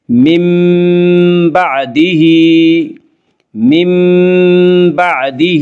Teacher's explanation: من بعدہ، من بعدہ، ہا کے نیچے کھڑی زیر ہے، کھڑی زیر کو ایک الف کے برابر کھینچ کر پڑھیں گے